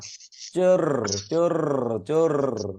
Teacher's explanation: জিবাটা কম্পন সৃষ্টি করে এটা মনে রাখতে হবে কম্পন সৃষ্টি না করলে উচ্চারণে ভুল হবে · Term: কম্পন জাত র